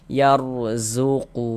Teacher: Innallaha yarzuqu ro sukun sebelumnya harakat fathah. Maka huruf ro sukunnya dibaca tebal dibaca tabkhim.